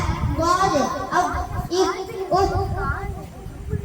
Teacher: வாது நாவின் ஓரம் மேல் கணவாய் பற்கள் மேலே தொடும் பொழுது ஒலிக்கப்பெறுகின்றது.